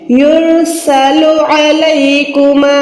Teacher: عین کو حلق کے درمیان سے ادا کریں